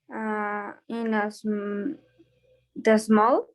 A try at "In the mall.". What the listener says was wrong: In the mall. In the mall.